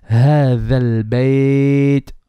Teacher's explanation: هَ is bottom throat and ذَا is tip of the tongue.